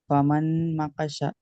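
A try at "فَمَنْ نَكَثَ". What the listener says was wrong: নুনের উপর তাসদিদ আছে না, দুবার পড়তে হবে। আর নুন তাসদিদকে গণ্য করা ওয়াজিব। আবার নুন সাকিনের পরে নুন, তাহলে নুনকে নুনের সাথে মিলিয়ে গণ্য করতে হবে। ফামান নাকাসা।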